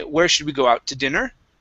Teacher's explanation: we're going to emphasize this last word by going up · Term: question intonation